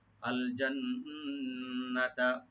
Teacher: নুন মুসাদ্দাদ ওয়াজিব গুন্না, এখানে একালে করে গুন্না করবেন। আল জান্নাতা, নুন টান হবে না, শুধু গুণা হবে।